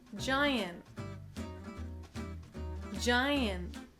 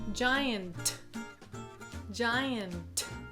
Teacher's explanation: the T in giant is not aspirated. That means that there isn't any air coming out after it. · So, his tongue went up to make the T, but, he never released his tongue, right? His tongue is like this gian', gian', not giant, giant. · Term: held T